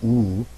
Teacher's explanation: the most round one ooh the jaw is most closed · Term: round vowels